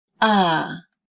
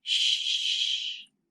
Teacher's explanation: time with your fingers on your throat to compare vibration ah there is vibration for a voice sound like ah there is no vibration for an unvoiced sound like shh